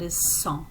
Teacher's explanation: you have a nasal vowel in the middle and a silent T at the end